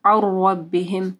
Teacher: نون ساکن کے بعد رو ہے، ادغام آ رہا ہے بغیر غنہ کے، اور رو کے اوپر زبر یا پیش آئے گی تو رو موٹی پڑی جائے گی.